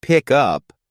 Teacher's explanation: in a phrase like pick up the stress usually falls on the second word up